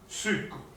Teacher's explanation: l'accento tonico è la U